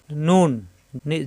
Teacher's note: জিহ্বার আগা উপরে তালুতে লাগবে